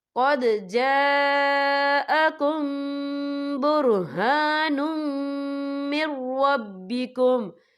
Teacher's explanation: یا دیکھیں قد، یہاں دال ساکن ہے تو یہاں پر قلقلہ ہوگا، اور آگے دیکھیں جا، یہاں خالف سے پہلے زبر ہے اور اس پر مد بھی ہے، تو یہ مد جو ہے مد متصل ہے، اس کی مقدار 4 حرکت کے برابر ہے، تو ہم اسے 4 حرکت کے برابر کھینچ کے پڑھیں گے.